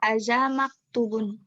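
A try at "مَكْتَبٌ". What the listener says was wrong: Kok maktubun? maktabun. Kalau maktubun itu ada wawunya di depan tak.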